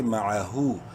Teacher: میں آمنو میم زبر ما عین زبر معہا الٹا پیش ہو ایک الف کے برابر لمبا کریں گے ہا کو الٹا پیش کی وجہ سے